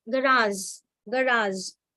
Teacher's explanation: In all the French words, you will have G as soft, but that soft G will not give the sound of letter J, but it will give the sound of letter ZH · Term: ZH sound